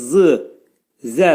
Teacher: Dil iki dişin arasına girərək xəfif şəkildə pəltək zı zə səsini çıxarırıq. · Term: pəltək hərfidir